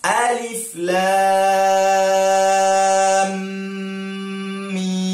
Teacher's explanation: Alif tiada harkat, lam 6 harkat, kemudian mim 6 harkat. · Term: mad lazim harfi musaqqal